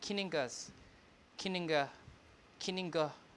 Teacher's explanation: all the unstressed syllables will be pronounced with the schwa